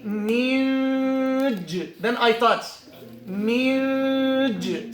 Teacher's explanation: The middle of the tongue, that's the makhraj of the jim. I touch the roof of the mouth.